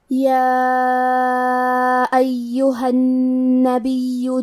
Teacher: مد جائز منفصل کا معنی ہے کہ حرف المد پہلے کلمہ کے آخری میں ہو اور اس کی وجہ جو کہ حمزہ ہے وہ دوسرے کلمہ کے شروعات میں آئے. اس مد میں ہم اپنی آواز 2 سے 4 مد کے برابر لمبی کریں گے